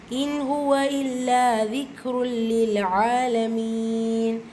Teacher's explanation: தன்வீனை தொடர்ந்து லெட்டர் லாம் வந்திருக்கு. இதுகாம் பிலா குன்னா இணைக்கணும், ஆனால் குன்னா செய்யக்கூடாது.